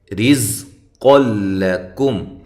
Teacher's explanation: رزق لکم، یہاں را باریک ہو رہی ہے، را کے نیچے زیر و را باریک ہوتی ہے، قاف کو موٹا، اور یہاں نون تنوین کا ادغام ہے لیکن بلا غنہ ہے، غنہ نہیں کرنا